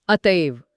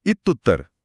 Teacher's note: स्वर आला तर >> जर विसर्गापुढे एखादा स्वर म्हणजे व्वल आला तर तो विसर्ग पूर्णपणे लोप पावतो तो गायबच होतो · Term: विसर्ग गळून पडला